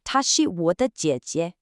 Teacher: For instance, if I say, 她是我的姐姐, she is my older sister. Did you hear how the second jie is really light and unstressed?